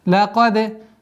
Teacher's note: Лакад. И применяем калкаля в звуке даль, правило взрывность